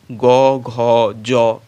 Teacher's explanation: যেসব ধ্বনি উচ্চারণের সময় স্বরতন্ত্রী অনুরিত হয় তাদেরকে বলে ঘোষ ধ্বনি